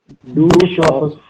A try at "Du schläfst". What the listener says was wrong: Du schläfst। कल सीखा था ना, ए के ऊपर umlaut लग जाएगा ना।